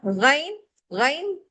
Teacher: गैन पढ़ते हुए गरगरा और गराहट की आवाज होती है। गन हलक बंद हो रहा है और भारी पढ़ना है हमने इस हर्फ को।